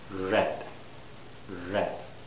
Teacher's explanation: A little bit of lip rounding, red, okay? And the tongue doesn't touch the roof of my mouth.